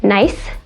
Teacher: that n is produced with the tongue tip pressed up against the alveolar ridge which is this spot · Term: the other n